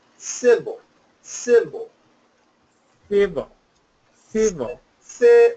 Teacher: it's a very strong first syllable